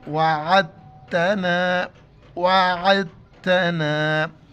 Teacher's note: دال ساکن ہے تو دال کے بعد فوراً تا کے اوپر شد ہے، شد کی وجہ سے ہم دال کو اگنور کریں گے۔ عین تا زبر عت، عین کو گلے سے ادا کرنا ہے۔